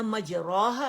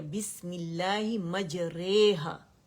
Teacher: इसमें जो रॉ की फतह है ना, उसको हमने कसरा की तरफ माइल करके पढ़ना है, और इसके बाद अलिफ को या की तरफ, ठीक है? यानी हमने रॉ की जो फतह है उसको कसरा की तरफ और अलिफ को या की तरफ माइल करके पढ़ना है। यानी ना मजराहा ना मजरीहा, मजरेहा करके पढ़ना है, ठीक है?